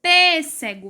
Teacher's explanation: Vocês conseguem notar que em pêssego o P é mais forte e ele é acentuado. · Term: sílaba tônica